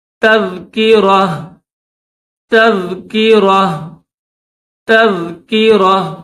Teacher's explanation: تو جب یہاں پر اسٹاپ کریں گے تو پھر اس کو ہم گول تا کو ہا پڑھیں گے